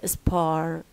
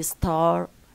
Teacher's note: So p, t, k, when they come after s, they are no longer aspirated, and in this case, they become so similar to their voiced equivalents b, d, g, respectively.